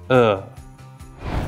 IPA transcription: ɜ: